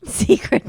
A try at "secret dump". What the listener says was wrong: Not secret dump. Well, it changes the meaning when you stress it that way. Well, no, it's not accurate. A secret dump is a secret poo-poo.